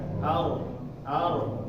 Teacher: kalau ro ini dia seperti terkumpul di ujung lidah kerana sifatnya juga yang takrir Ya sifatnya yang takrir atau bergetar nanti ada penjelasan lagi untuk · suaranya ini berpusat di depan ya di depan di ujung lidahnya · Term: huruf ro